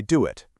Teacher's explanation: That little W sound just sneaks right in there. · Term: insertion